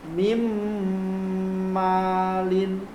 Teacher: Cara membacanya, suara nun hilang, lebur ke huruf idgham bi gunnah.